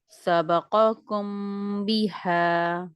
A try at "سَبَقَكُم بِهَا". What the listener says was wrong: شاباش, قاف اور کاف بہت اچھا پڑھا آپ نے, بہت الگ کر کے.